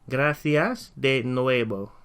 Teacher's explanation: in Spanish, the V sound is actually pronounced as a B sound